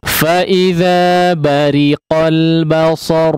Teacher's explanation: Ya, bariqo ya, ri di sini ditipiskan, kondisi huruf ra dibaca tipis